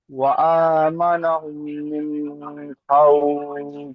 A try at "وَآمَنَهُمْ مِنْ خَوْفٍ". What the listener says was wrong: না, মিন বলে গুণনা করলে হবে না, মিন খাউফ।